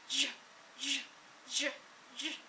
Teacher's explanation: when you take a ch sound and keep everything in your mouth the same, you just add voicing. It's become the J sound.